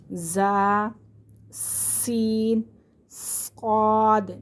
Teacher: جب ہم انہیں پڑھتے ہیں تو اس میں سیٹی کی آواز پیدا ہوتی ہے، زا، سین، صاد، اسی لیے انہیں سیٹی والے حرف کہتے ہیں یا صفیریہ حرف کہتے ہیں۔